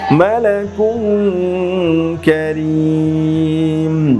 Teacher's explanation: তানবিনের পরে ইখফার হরফ কাফ এসেছে, এজন্য এখানেও আমাকে ইখফার গুন্নাহ করতে হচ্ছে। মালাকুং কারীম, ওয়াকফ করলে মালাকুং কারীম।